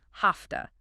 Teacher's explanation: the V in have is voiced but the T in to is voiceless. The often becomes voiceless too, sounding like an F.